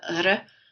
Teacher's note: here in Manitoba, you'll hear that apical R a lot more than you would in Quebec